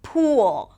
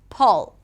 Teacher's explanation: Same thing with the pool, pull, tense, oo, pool, longer, the tongue is higher, pull, shorter, the tongue is lower, food, foot, bed, bad.